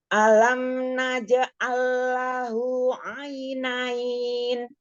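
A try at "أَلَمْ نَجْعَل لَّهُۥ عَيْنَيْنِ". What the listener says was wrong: Alam naj'allahu, tahan dulu lam sukunnya.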